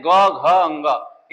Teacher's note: अब आ जाते हैं सघोष में तो हम कहते हैं ग, घ इनमें कंपन उत्पन्न होता है